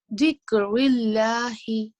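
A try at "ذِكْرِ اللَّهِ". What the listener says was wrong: The dhal, make sure it sounds like this. Dhikrillahi.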